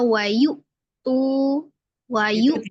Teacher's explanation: hamzahnya sifatnya siddah. Jadi seperti kayak ada tanda koma gitu ya,